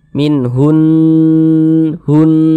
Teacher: kami jelaskan di atas ya Jadi ini hukumnya adalah ghunah musyaddadahah jadi kita tahan suaranya kita dengungkan